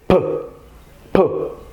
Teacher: P is a bilabial sound. It's made with both lips.